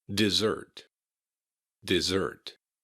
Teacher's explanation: Notice that the S's in dessert have a Z sound.